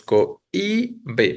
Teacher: La palabra cohíbe ahí sí se acentúa porque es abierta o fuerte la O, débil la I y la que está siendo tónica es la débil